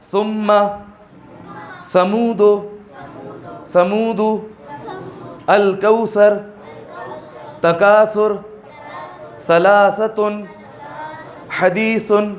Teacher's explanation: زبان کی نوک دانت کے سروں پر ٹچ کریں گے تو سا ادا ہو جائے گا